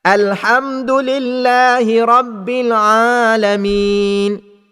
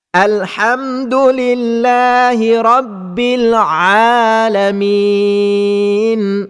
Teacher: pembaca Al-Fatihah membaca makhraj huruf Ain dengan makhraj rongga hidung pada kalimah Alamin. Perkara ini biasanya berlaku apabila pembaca menekan suara atau bacaan dan sebutan huruf Ain.